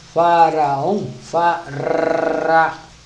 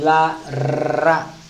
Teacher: o R deve ser na ponta da língua. Esse R, que a maioria de nós está acostumada a pronunciar na garganta, esse R, esse não serve.